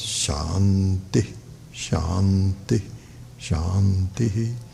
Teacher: When you do after Purnamadav, it becomes Shanti, Shanti. So it's low to high, or low to normal, and not high to normal.